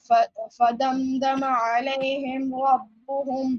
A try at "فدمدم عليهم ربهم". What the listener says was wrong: Apply gunna here, come on. عليهم, not عليه, it is علي, come on.